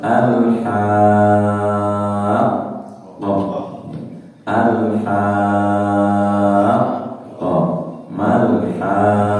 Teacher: Mad tabi'inya dha, huruf bertasydidnya pada lam. Jadi cara membacanya dipanjangkan dulu 6 baru ditasydidkan. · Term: mad lazim kilmi musaqqal